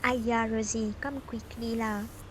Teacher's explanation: The most obvious one and noticeable in Singlish is early booster at the beginning of the utterance, so people tend to speak with high pitch occurring on the first word